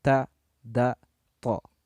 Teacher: Cara pengucapan ketika menyuarakan nun sukun atau tanwin, ujung lidah hampir menyentuh pangkal 2 buah gigi atas sesuai posisi makhraj hurufnya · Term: ikhfa aqrab